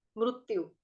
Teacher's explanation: संस्कृत में री नहीं होता, रू का उच्चारण करते हैं हम लोग